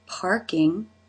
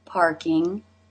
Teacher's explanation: the aw as and father followed by the R consonant sound the R consonant sound has a way of taking over this vowel